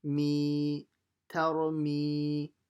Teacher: Mim kasra will be stretched by ya sakin